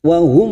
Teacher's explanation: Idhar syafawi kita baca jelas tanpa mendengung